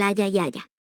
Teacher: En la pronunciación yeísta, la letra L, que representa el fonema lateral palatal de llave, se articula con la misma pronunciación que la letra I, es decir, como el fonema palatal sonoro de yunque. De manera que las personas yeístas pronuncian igual haya y haya.